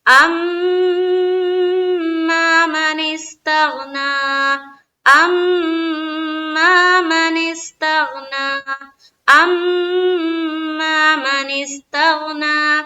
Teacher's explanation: ام میں میم مشدد کا غنہ کرنا ہے، میم کے اوپر شد ہے